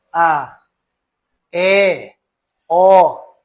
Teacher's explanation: proferidos quando a boca está mais aberta e é grande a distância entre a língua e o céu da boca.